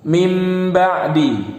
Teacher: Nun sukun atau tanwinnya berubah menjadi mim. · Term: iqlab